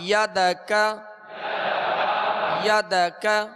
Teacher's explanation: یہ کاف باریک پڑھیں گے، ڈنڈی والا کاف ہے